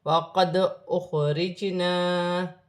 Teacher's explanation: دال ساکن ہے، حرف قلقلہ میں سے ہے، قلقلہ کے ساتھ ادا کیا جائے گا